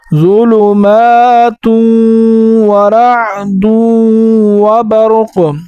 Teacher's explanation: اور نون اور میم کے جیسا غنہ اس میں نہیں ہوگا کہ ناک میں آواز جائے گی، اس میں ناک میں آواز نہیں جائے گی